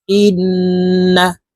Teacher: হামজা নুন ওয়াজিব বামে নুনের উপরে তাসদিদ আছে এই কারণে এই হামজা তাশদি নুনের সাথে নাকের পাশে থেকে গুন্না করে পড়তে হবে